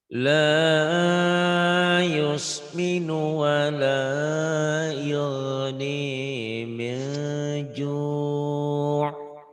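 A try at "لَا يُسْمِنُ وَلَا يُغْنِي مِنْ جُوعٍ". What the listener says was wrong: Ju' agak neken sedikit, kurang neken tadi.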